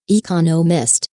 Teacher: economist this content word has new information so it is emphasized there are four syllables in economist with the stress on the second syllable